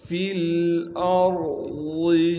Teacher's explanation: حمزہ کو آگے را ساکن سے ملائیں گے اور ضاد کو موٹا کر کے پڑھیں گے · یا کو با ساکن سے ملائیں گے، با پر قلقلہ کیا جائے گا کیونکہ با حروف قلقلہ میں سے ہے۔